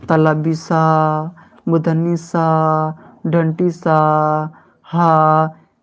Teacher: तलबी सा, मूर्धनी सा, दंती सा और हा का उच्चारण रगड़ या घर्षण से उत्पन्न होता है और उस वायु से होता है, अतः इन्हें ऊष्म व्यंजन कहते हैं।